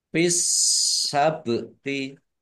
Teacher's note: huruf berikutnya yaitu sin ditandai sinnya ada tasdidnya sinnya dibaca double bak sukun bacaan kolkolah dibaca memantul ditampakkan pantulannya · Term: alif lam samsiah